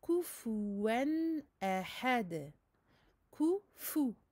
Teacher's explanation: on avance bien les lèvres pour les 2 dammah et on fait attention à bien prononcer le waw qui en général, pas pour tout le monde évidemment, mais souvent il est remplacé par une hamza.